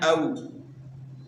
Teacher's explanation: تو حروف لین کو نرمی سے ادا کیا جاتا ہے، تو یہاں بھی ہم نے واو کو نرمی سے پڑھنا ہے، او، اور واو کی ادائیگی میں دونوں ہونٹ جو ہے نا گول ہوں گے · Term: واو لین